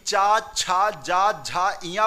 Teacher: अब चा, जब भी चा, छा, जा, झा, इया बोलोगे तो जो आपकी जीवा है वो आपके तालू पे स्पर्श करती है